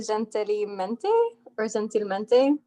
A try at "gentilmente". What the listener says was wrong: Yeah, almost perfect. So the G in Spanish has like an H sound. So it's like gentilmente.